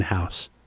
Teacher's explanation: A surd aspirate, by the way, is when a letter becomes little more than a short exhale, like the H in house. Surd being voiceless and aspirate being like aspiration.